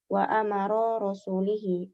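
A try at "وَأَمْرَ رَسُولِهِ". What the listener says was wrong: Amro bukan wa amara, wa amro.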